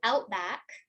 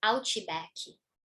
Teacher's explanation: And here too, outback, right, would become ouchibaki. So you have this extra ch sound here and baki instead of back.